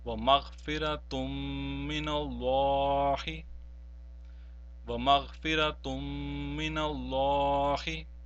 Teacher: we have not pronounced the first noon sakin or noon tanween, but we pronounced the mim mushaddad and prolonged it as well · the noon tanween will not be pronounced, but the mim mushaddad which is following that will be pronounced and prolonged as well. So this will be read as وَمَغْفِرَةٌ مِّنَ اللَّهِ, وَمَغْفِرَةٌ مِّنَ اللَّهِ.